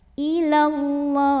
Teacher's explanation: Maka alif lam ini tidak perlu dibaca, dari lam pertama langsung tekan ke lam kedua. Ilallah. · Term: alif lam syamsiyah